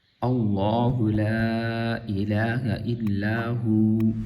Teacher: جب اس پہ ہم وقف کریں گے تو واو کی جو زبر ہے وہ گر جائے گی، پھر بن جائے گا ہو